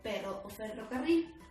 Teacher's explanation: la r es un sonido fuerte vibrante